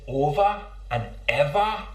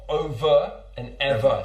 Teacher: accent is on the words that end in ER and O they are pronounced with an a sound not an uh sound